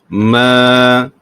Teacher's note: Hukum mad asli, kamu panjangkan 2 harakat